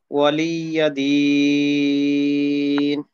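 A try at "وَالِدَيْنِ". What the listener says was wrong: হ্যাঁ, ওয়ালিয়াদিন না বলে ওয়ালিয়াদিন, কারণ লাম আর ইয়াতে এত সময় দেওয়ার প্রয়োজন নেই। ওয়ালিয়াদিন। আপনি যে মিমে দুই জের আছে, কিন্তু আপনি দুই জের না পড়ে জজম কেন পড়লেন?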